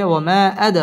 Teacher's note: দাল কলকলার হরফ ধাক্কা দিয়ে পড়তে হবে